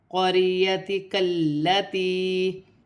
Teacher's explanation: مد منفصل 3 الف کی مقدار تک کھینچ کر پڑھا جاتا ہے، لیکن یا مدہ کو ملا کے 4 الف کی مقدار تک کھینچ کر پڑھا جائے گا